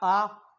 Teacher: विवृत है, पूरा वृत्त खुलता है, पूरा मुख विवृत में पहुंच जाता है।